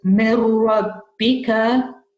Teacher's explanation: The next one is full idgham because after noon sakin, you've got the ra.